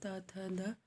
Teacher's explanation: इसका उच्चारण जीभिया के ऊपरी दांतों को छूते हुए होता है।